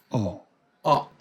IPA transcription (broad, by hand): ɒ